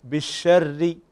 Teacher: فنكسر الشفتين عند النطق بالحرف المكسور، وهنا الراء عندنا مكسورة فلا بد أن نكسر الشفتين بالشر.